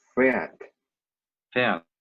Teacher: we don't pronounce the R sound because we have Ä, H, and then the R